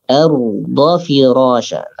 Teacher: Dari huruf dhad ke fa itu bacaan agak cepat. Tidak dipanjangkan dhadnya.